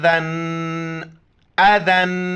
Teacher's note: یہ امزہ زبر ا، ذال دو زبر ذن، اذن، ذال کے وقت زبان باہر نکالنا ہے